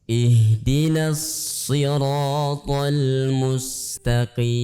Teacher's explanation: Sin harus dibaca dengan tipis ya.